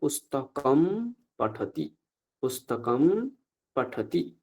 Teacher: অনুসারটাকে আমরা তুলে দিয়ে কি করবো সেখানে ম উচ্চারণ করবো